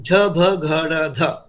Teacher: So 4th letters are known as Ghosha and Mahaprana. Voiced and aspirates. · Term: voiced aspirates